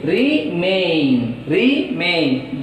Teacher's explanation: re is a prefix, so that stress is on second syllable. From where the stress is started, from second syllable is started, may, re, may, so that second syllable is M.